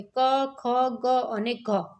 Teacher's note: કંઠ્ય તો કે કંઠમાંથી શું બોલાય તો કે ક, ખ, ગ અને ઘ. તો ક છે અઘોષ છે, ખ છે એ અઘોષ છે અને ગ છે એ ઘોષ અને અલ્પ પ્રાણ. ઘ છે એ પણ એ ઘોષ છે.